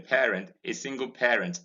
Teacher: many nigerians say pay using ae instead of air in this word parent